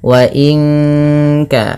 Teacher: Nun mati bertemu kaf, suaranya disamarkan ke kaf ya, terdengar bunyi wa inka langsung kepada makhraj huruf ka yang dimana kaf makhrajnya pangkal lidah kita, di pangkal lidah, maka bukan wa inka tapi wa inka.